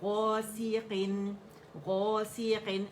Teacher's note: رکھا کریں، ٹھیک ہے؟ غاسیقن، سی ساؤنڈ، ٹھیک ہے؟ غاسیقن، غاسیقن، اب اس کو مد بھی نہیں بنائیں کہ سی لمبا کر دیں اور وہ مد بن جائے ، وہ ہم نے نہیں کرنا، ٹھیک ہے؟ Just one count